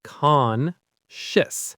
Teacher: The stress is on the first syllable. Concious. So, the ending is a quick sh sound.